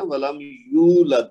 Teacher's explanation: यहाँ पे वाव मद है, तो इसको 2 हरकत तक खींचना है। ये जिसपे मैं लाइन लगा रहा हूँ ना, तो इसको 2 हरकत तक लंबा करना है।